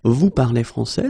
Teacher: So of course, l'Académie Française would like me to put them in the other order, but basically you will hear many French people and many French-speaking people just keep the same order and raise their voice at the end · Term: raise the voice